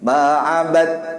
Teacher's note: dal itu dimasukkan ke ta. Jadi nggak ada qalqalah sughra lagi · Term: idgham mutajanisin